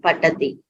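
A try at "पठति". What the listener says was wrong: Pathati. Tha mahaprana. Patha. Yes, so all of you should improve your mahapranas, the distinction between alpaprana, mahaprana.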